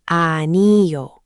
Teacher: The stress is pretty even across all three syllables, but there's a slight lift on the ule at the end.